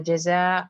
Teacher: تنوین کی آواز کمپلیٹلی مرج ہو رہی ہے، تو ادغام تام ہو رہا ہے